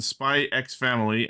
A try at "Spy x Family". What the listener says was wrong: You don't pronounce the X. It's a Spy Family.